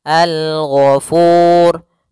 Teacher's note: yang diwakafkan adalah huruf ro maka kita ada tambahan hukum yaitu hukum ro tafkhim ro yang dia dibaca dengan tebal